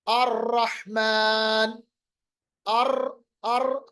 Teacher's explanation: जैसे मिसाल के तौर पर रा, हर्फ रा को पढ़ते वक्त आप देखें ट्रैक्टर की तरह हर्फ में या आवाज में या हमारे मुंह में यानी फिसलन हो जाती है, रिपीटिशन हो जाती है, या जुबान का जो हिस्सा है वो थ्रिल होता है। थ्रिल का मतलब ऊपर नीचे वाइब्रेट होता है। अर रहमान, अर अर पढ़ रहा है ना, मगर इसमें भी आपको ये याद रखना है कि इसमें भी खूबसूरती तभी है जब ये थोड़ा कम किया जाए।